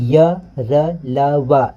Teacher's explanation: य र ल व इसमें किसी भी तरीके से अलग से आवाज नहीं आ रहा है तो वो हमारा अल्पप्राण है। उच्चारण में श्वास पूर्व से अल्प मात्रा में निकले जिसमें हंकार ध्वनि नहीं होती है।